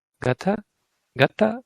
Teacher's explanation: If I said gata, it means, did that person go? Is that person gone? And you hear me raising at the end.